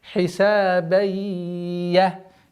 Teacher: А здесь у нас ассимиляция с частичной назализацией.